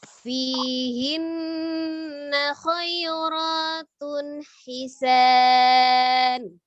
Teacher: nun tasdidnya ditahan ya, digunnahkan, ditahan 2 sampai 3 ya. Jadi jangan langsung fihinna.